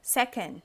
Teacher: O stress, ele tá todo no se. E aqui a gente fala meio can.